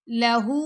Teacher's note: ह के ऊपर उल्टा पेश है तो दो सेकंड का टाइम देंगे